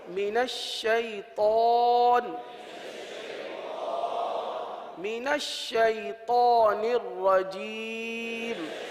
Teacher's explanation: طا کو پر پڑھیں گے، طا حروف مستعلیہ میں سے